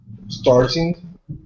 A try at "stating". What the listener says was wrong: no there's no R look again